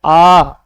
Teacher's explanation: आ बोलते हैं तो हमारा मुख क्या होता है? ज्यादा खुलता है।